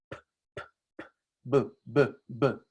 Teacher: para producir b, ustedes están haciendo vibrar los pliegues vocales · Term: sonoro